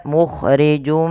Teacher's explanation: yang kita namakan dengan bacaan Idgham bighhunah idgam artinya nya memasukkan bighunah Artinya kita menahan memasukkan suaranya kepada rongga hidung kita · tanwinnya dimasukkan ke mim karena bertemu dengan huruf mim